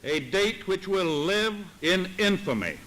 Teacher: date which will live in infamy so he doesn't really do that singing through the line that sort of sustained intonation